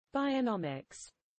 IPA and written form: ˌbaɪəˈnɒmɪks (bionomics)